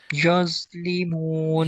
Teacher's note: ضا کی آواز موٹی اور نرم